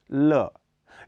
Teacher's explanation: यह अल्प प्राण घोष ध्वनि है इसका उच्चारण स्थान वर्थस का पार्श्व भाग है इसके उच्चारण की प्रक्रिया में जीभ की नोक मसूड़ों को छूती